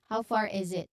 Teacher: the pronunciation it emphasizes on the long a sound as in far. You draw out the vowel sound. So the linking of far and is far is a common feature for connected speeches.